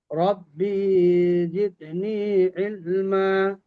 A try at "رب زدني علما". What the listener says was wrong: ربي، এটা টান হবে না, আমরা তো প্রতিদিনই পড়ছি।